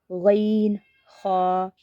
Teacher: न खा यह हलक के ऊपर वाले हिस्से से अदा होते हैं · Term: हरूफ हल्की